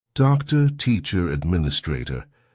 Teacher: in a word like doctor, teacher, these ER or ending words, that will be a schwa